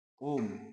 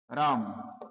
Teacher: प्लुत, प्लुत का मतलब होता है इसमें और भी ज्यादा समय लगेगा, मतलब ह्रस्व से और दीर्घ सभी से ज्यादा, मतलब इनमें तिगुना समय लगने वाला है। जिनके उच्चारण में दीर्घ स्वर से 3 गुना समय लगता है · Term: प्लुत स्वर